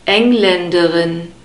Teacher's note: We have a second A sound after the L and an unstressed E sound and a short E sound at the end